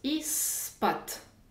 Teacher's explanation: Z est sonore, p est sourd. La deuxième consonne l'emporte, comme vous le savez déjà. Donc, le p assourdit le z. Je prononce ispat. · je remplace le « de » sonore par son équivalent sourd « t »